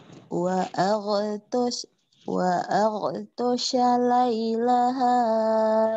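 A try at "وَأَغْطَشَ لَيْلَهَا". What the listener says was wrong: eh benar Iya cuma napasnya doang ke seret-seret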